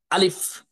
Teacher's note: হলকের শুরু বা কণ্ঠনালীর শুরু থেকে জোরে সরে ধাক্কা দিয়ে দ্রুততার সহিত আলিফ অক্ষরটি উচ্চারণ করতে হয়